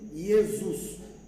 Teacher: Jesus, pour être prononcé, les S entre deux voyelles, ça sonne Z.